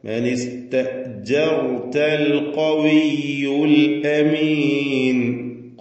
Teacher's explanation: അൽ അമീൻ ഹംസ clear ആക്കി വ്യക്തമാക്കി ഉച്ചരിക്കണം. ഷിദ്ദത്തിന്റെ അക്ഷരമാണ്.